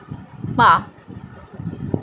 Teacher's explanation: जब हम पा बोलेंगे तो ये हमारे जो ओठ है एक दूसरे से टच होते हैं